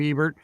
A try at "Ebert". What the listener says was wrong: It's not Ebert. The T isn't silent.